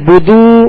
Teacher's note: पेश को बगैर खींचे, बगैर झटका दिए मारू पड़ेंगे